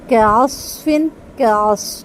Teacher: कस नहीं होगा सिर्फ स्वाद पुर होगा